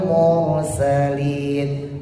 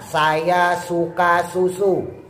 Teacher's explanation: sin ujung lidahnya taruh bawah antara gusi bawah sama gigi bawah. Sin tipis sama sin tebal beda ya.